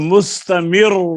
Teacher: مستمر کی را پر جو پیش ہے اس کو دیکھ کر ہم اس کو پر پڑھیں گے۔ تو را پر اگر وقف کیا جائے روم کے ساتھ تو زیر کی حالت میں باریک اور پیش کی حالت میں پر۔ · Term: را مشدد